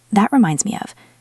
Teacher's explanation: Notice how the t in that can stop abruptly